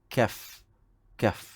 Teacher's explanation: Cuma makhrajnya di hadapan sedikit daripada qaf. Jadi menghasilkan bunyi K, itu kaf. Kaf. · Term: huruf kaf